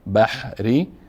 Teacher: حی ساکن هست و ری هم مکسور است و مرقق خوانده میشه